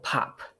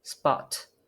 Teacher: at the beginning of the syllable we'll have an aspiration